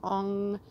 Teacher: the NG sound you're feeling it in the back of your throat